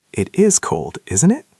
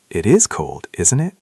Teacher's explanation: Keep your voice down at the end. Make it a statement, not a question.